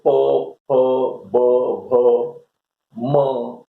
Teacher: ये सारे जो ध्वनियां हैं ये ओष्ठ ध्वनि या ओष्ठव्य ध्वनि भी इनको कहा जाता है